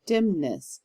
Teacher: I have 2 syllables in the word dimness, so I've got the accent on the dim part.